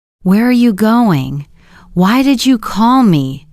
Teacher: our voice usually goes down at the end.